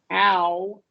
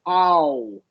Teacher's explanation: We do start with a wide short A, right?